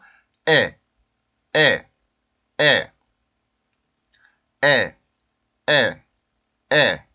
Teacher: 이 발음은 우리나라에 여기 써있는 에라고 생각을 하셔도 돼요. 그런 다음에 강세가 있기 때문에 꺾어주듯이 성대를 한번 막았다가 열어주면서 꺾어주듯이 굴절음을 만들어 주시면 되겠죠.